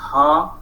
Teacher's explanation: Voiceless or unvoiced means there is no vibration in the vocal cords. When you produce the sound ha, there is no vibration in the vocal cord.